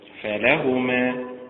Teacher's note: فلهما بالنبر على حركة اللام